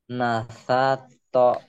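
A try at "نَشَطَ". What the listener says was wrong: shinnya gede.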